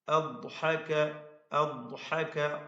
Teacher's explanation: ദ്വാദിന്റെ മഖ്റജിൽ നിന്ന് തന്നെ അതിന്റെ ഉച്ചാരണം വരണം. തഫ്ഖീമോടുകൂടി ദ്വാദ് ഉച്ചരിക്കേണ്ടതാണ്. ഹാ ഹൽഖിയായ അക്ഷരമാണ്.